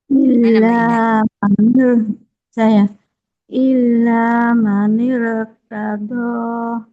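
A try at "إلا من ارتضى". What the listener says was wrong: Tebalin lagi rohnya.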